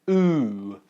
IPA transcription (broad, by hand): ʊ